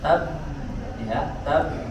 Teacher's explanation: Kemudian ada huruf ba, di sini ada tasydid, maka suara ditahan di makhrajnya, tab, ya, tab, ya.